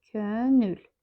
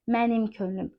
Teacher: Burda siz könlüm sözündə hətta mənsubiyyət qəbul etdiyinə görə sait düşməsini görə bildiz. Deməli sözün kökündə sait düşməsinin şahidi olduz.